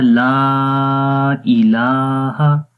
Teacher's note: لا کو لمبا کریں گے، یہاں پر الف مدہ ہے۔